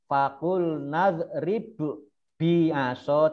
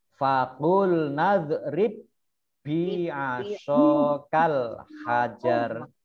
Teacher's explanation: Jadi tidak dibaca fakul nadrib bi'aso, tidak ya. Baknya tidak dipantulkan, tetapi dibaca double ya, masuk tasdid ini.